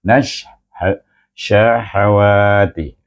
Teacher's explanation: Gabungkan nun itu dengan huruf shin yang bertasydid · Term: idgham syamsi